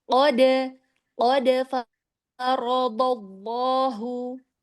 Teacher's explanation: Qalqalahnya pantulan hawa suara ke atas.